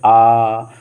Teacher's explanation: तो वह जो है आ हम सीधे सीधे बोलते हैं, जैसे आ। तो हमारी जो मुंह है वो सीधा सीधा रहती है, वृत्त नहीं बन रहा है, तो इस प्रकार से विवृत स्वर हुआ।